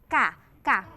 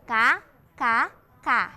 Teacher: huruf Kaf keluarnya ini di tengah-tengah